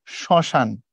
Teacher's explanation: দেখো, মফলা যখন আমি যুক্ত করি, আমি যখন লিখি হচ্ছে এই যে শ্মশান, মফলার উচ্চারণ করা হয় না, উচ্চারণ করার সময় পড়া হয় শ্মশান। মানে মফলা যার সাথে বসে তার উপরে নাকের একটা ঝোঁক আছে, চন্দ্রবিন্দুর ঝোঁক দিবা।